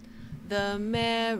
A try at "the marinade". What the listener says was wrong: There's no O in marinade. Let's try it one more time.